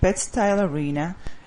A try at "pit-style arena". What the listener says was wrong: No, pit-style arena. You have to pronounce that P with more air. Pit-style arena.